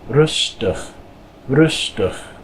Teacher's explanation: anytime you have an IG, usually at the end of a word, it makes the I kind of like a short U sound. So this is rustig, rustig.